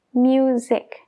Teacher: Cuidado con la s de la palabra music porque es más como una Z que una s